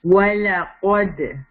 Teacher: لا light رہے گا, قاف heavy ہوگا, دال کے اوپر سکون ہے تو یہاں شیک کریں گے